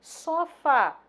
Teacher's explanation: sílaba tônica Fá, uma palavra oxítona